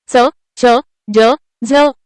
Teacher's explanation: दंततालव्य व्यंजने ज्यांचा उच्चार दात आणि तालू यांच्या सहाय्याने होतो